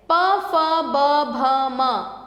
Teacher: इनके लिए हम अपने जो वायु है वो होठों को छूकर निकल रही है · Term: ओष